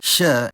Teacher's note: the voiceless palatal fricative [ç]